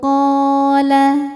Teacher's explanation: Karena ada alif sebelumnya fathah dibacanya panjang dua harakat. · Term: Mad thobi'i zohiri